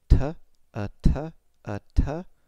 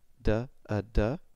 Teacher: the only difference between T and D is whether your vocal cords are vibrating or not